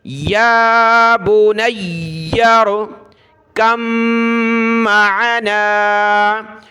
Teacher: تو جب دو حرف ایک جیسے جمع ہو جائیں، پہلا ساکن ہو، یہ دیکھیں با کے اوپر سکون، اور دوسرا مشدد ہو یعنی اس کے اوپر یہ تشدید ہو، تو وہاں پہلا جو ساکن ہے اس کو چھوڑ دینا ہوتا ہے۔ تو یہاں ہم کاف کو ڈائریکٹ میم کے ساتھ ملائیں گے، با کو ہم نے بالکل بھی نہیں پڑھنا۔